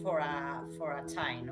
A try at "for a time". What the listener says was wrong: you gotta close your mouth when you say M at the end.